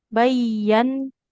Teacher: Jadi ya harus ditekan. Kalau nun bertasid dia ditahan jadi gunah